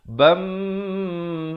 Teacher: Cara bacanya masukkan dengan dengung 2 harakat. Bam, asalnya ban, tapi terus masuk di sini. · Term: idgham bi gunnah